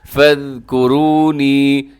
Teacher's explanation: اب اس آیت مبارکہ کے اندر دیکھیے گا، فَاذْكُرُونِی، یہاں پر بھی چھوٹی مد ہوتی ہے، اس میں را جو ہے گرین کلر میں ہے، را کے اوپر پیش ہونے کی وجہ سے را موٹا پڑھا جائے گا